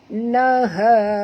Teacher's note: Ha di sini mad asli dan keluarkan bunyi ha daripada halkum.